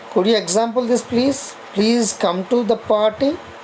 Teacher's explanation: The rising tone is also used to make polite request.